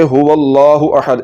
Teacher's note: اس واو کو لام کے ساتھ ملا دیں گے